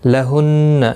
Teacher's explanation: نون مشدد پر گنہ ہوگا